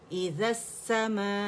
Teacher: یہ مد متصل واجب بنتی ہے تو ہم نے لازمی سے 5 کاؤنٹس کھینچنا ہے